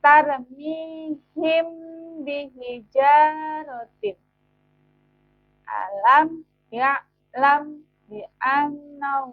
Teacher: dengan suara yang samar antara mim dan ba pada bibir kemudian ditahan kira-kira dua harakat atau dua ketukan Seraya mengeluarkan suara ikfah dari pangkal hidung perhatikan contoh berikut tarmihim